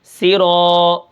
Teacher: را کو ایک الف کے برابر کھینچ کر پڑھوں گا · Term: الف مدہ